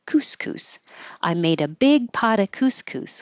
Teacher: we don't have to say of you say uh and the T changes to a d